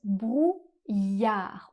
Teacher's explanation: dans le mot brouillard on ne prononce pas le d final. Comme très souvent en français, on ne prononce pas la dernière consonne du mot.